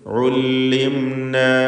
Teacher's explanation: ഉല്ലിംന സാക്കിനത്ത് അമീം ഇൽഹാർ ഷഫവി നൽകി മണിക്കാതെ വെളിവാക്കണം. അമീമിന് അല്പം പോലും മണിച്ചു പോരുത്, അഥവാ ഉല്ലിം എന്ന് സമയമെടുത്ത് മണിക്കരുത്.